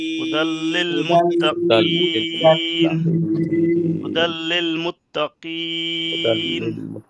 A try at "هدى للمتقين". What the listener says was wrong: আচ্ছা, মাশাআল্লাহ, ঠিক আছে।